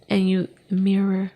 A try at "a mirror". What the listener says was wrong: It sounded like you said Amir, like a man's name. I-M-I-R, Amir. Amir. a mirror. A mirror. Yeah, mirror.